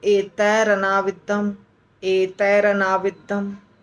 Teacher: तो एतैः अनाविद्धम में तैः का विसर्ग गायब हो जाता है और र चला आता है